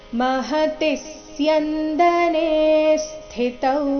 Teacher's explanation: ಸ್ಥಿ ನಲ್ಲಿ ಥಿ ಮಹಾಪ್ರಾಣ ರಸ್ವ ಇದೆ, ಅದು ಚೆನ್ನಾಗಿ ಬರಬೇಕು